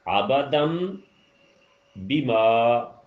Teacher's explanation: تو وہاں آپ نے نون کی آواز ختم کر کے جو ہے وہ میم کی آواز کرنی ہے. لیکن تنوین میں جو کام ہے وہ یہ ہے کہ وہ صرف نون نہیں، وہ کچھ بھی ہو سکتا ہے، کوئی بھی حرف ہو سکتا ہے، لیکن اگلا حرف جو ہے وہ بے ہونا ضروری ہے. · عبدم بما کیا فرق تھا کہ بیما جو ہے اس کی آواز بیما کی بجائے بیما ہو گئی، یعنی ناک میں نون کا غنہ کر دیا آپ نے